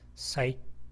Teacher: 이 T 발음은 영어에 있어서 이 T 발음은 약하게 파열됩니다. 그래서 sight하고 그 다음에 T 이런 식으로 터짐 소리만 살짝 갖다 붙이면 됩니다. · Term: 부분 파열